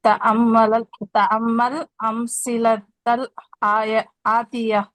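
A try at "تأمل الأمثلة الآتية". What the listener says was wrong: आपने भी वैसे ही पढ़ा। ये देखें, दो साकिन आ गए ना,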